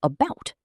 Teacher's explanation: In car, broad A. In about, a schwa sound, almost like uh.